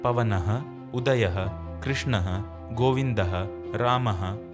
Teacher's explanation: Notice that these original versions have something called a visarga or expulsion of air added at the end.